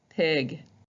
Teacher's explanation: So when you pronounce the letter P, when you look in the mirror, your lips are coming together and you're spitting them out. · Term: popping sound